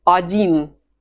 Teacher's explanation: The letter O is weak, and we pronounce it A.